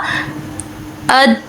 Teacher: زبان کا بیچ والا حصہ یہ اوپر کے تانوں سے چپک گیا ہے، پورا بند ہو گیا ہے، تو یہ زبان وہاں سے نہیں ہلی، تو آواز فوراً سے بند ہو گئی ہے، کیونکہ ہم نے اس کو قلقلہ کے بغیر ادا کیا ہے۔ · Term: صفت شدت